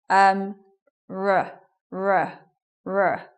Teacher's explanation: when we make the R sound the position of the tongue is quite far back in the throat